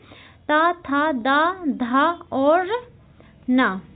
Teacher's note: ऊपर के दांतों को क्या करता है? जीभ का आगे का भाग हमारा ऊपर के दांतों को छूता है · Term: दंत व्यंजन